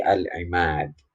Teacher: Dan yang terakhir ini ingat kalau dibaca sambung maka ini tidak terjadi. Tapi kalau dibaca berhenti atau wakof maka terjadilah yang dinamakan qalqalah kubro. Di mana ada huruf qalqalah dibaca sukun atau dibaca mati.